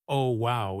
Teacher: If you say, Oh wow, in a flat, bored voice, it sounds sarcastic.